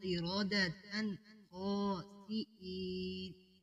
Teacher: قِرَدَةً، قِرَدَةً، آگے جو تا آ رہا ہے گول تا، اس پر یہاں پر اظہار ہو رہا ہے۔ آگے کیونکہ خاسئین جو خا ہے یہ حروف حلقی میں سے ہے، یہاں پر اظہار ہوگا